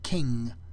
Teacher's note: the symbol angma is used to indicate the voiced Veer nasal this is the nasal consonant sound that we make at the end of a word like King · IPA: ŋ